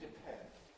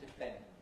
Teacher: With aspiration, depend. Without aspiration, depend.